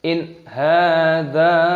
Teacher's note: Faqala in ha, nun sukun bertemu dengan ha, hukumnya dibaca izhar halqi, dibaca jelas. In hadza, panjangkan dzalnya, mad jaiz munfasil, 5 ketukan.